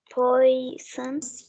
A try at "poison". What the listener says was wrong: poison. اوكي مش بنقولها poison، لا الاو دي مش بننطقها كده. بصي poison.